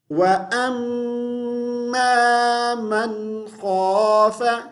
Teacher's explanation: خا سے پہلے غنہ نہیں کریں گے خ حروف حلقی میں سے آیا ہوا ہے